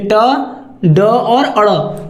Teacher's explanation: ये सभी व्यंजन अल्प प्राण होंगे क्या होंगे अल्प प्राण इनको उच्चारण करने में कम हवा निकलती है मुंह से